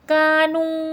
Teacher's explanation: کانو، کاف میں الف مدہ ہے کھینچ کے پڑھا جائے گا، نو میں واو مدہ ہے کھینچ کے پڑھا جائے گا